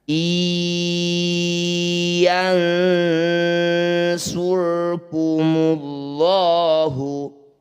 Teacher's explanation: Bunyi nun langsung masukkan pada ya. Jangan lupa didengungkan 2 harokat. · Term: idgham bi gunnah